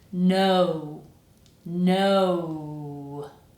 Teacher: By the time you finish saying the syllable, your mouth should be in an ooh position.